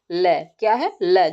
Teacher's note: जिसका उच्चारण कहां से होता है दंत से होता है लेकिन जो प्राण वायु वो बगल से निकल जाती है इसलिए पार्श्विक व्यंजन बोलते हैं